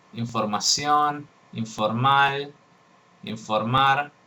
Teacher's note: En castellano, la nasal labiodental se articula cuando hay una nasal antes de un sonido F, que es también labiodental.